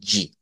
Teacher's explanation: es un africado que nos une el sonido de una d con el sonido de una J